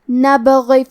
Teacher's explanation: نبغی، آخری میں حرف الغین ہے، غین کی ادائیگی حلق کے اوپر والی حصے سے ہے، غین حروف التفخیم میں سے ہے تو ہم یہ حرف کو موٹی آواز میں پڑھیں گے، اور کیونکہ اس کے نیچے زیر ہے تو ہمیں غین کو صرف زیر سے پڑھنا ہے۔